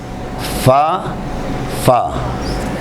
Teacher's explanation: زیریں ہونٹ کے اندرونی حصے سے ثنایا علیہ کے کنارے لگے تو حرف فا